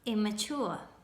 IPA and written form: 'ɪmə'ʧuə (Immature)